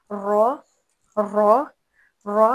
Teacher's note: फिर रॉ ज़बान की नोक से ही अदा होते हैं, दांतों की जड़ से, और थड़थड़ाहट। रॉ रॉ रॉ, हमने रे या रा नहीं पढ़ना बल्कि रॉ पढ़ना है, रॉ।